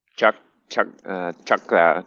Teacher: It's not said like an English word. English words are all said with your mouth moving up and down. That R's said with your tongue punching forward.